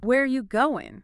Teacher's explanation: So for where are you going, the word going goes down. · Falling intonation. Your voice goes down at the end.